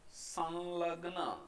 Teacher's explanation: એ જ રીતે સંલગ્ન, અને એમના ઉચ્ચારણ વખતે આપણે અનુસ્વાર છે એ લ જ ઉચ્ચારવાનું છે